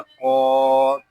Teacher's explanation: یہاں قوف کو ہم ایک الف تک کھینچ کر بھی پڑھیں گے کیونکہ یہاں پہ کھڑا زبر آ رہا ہے۔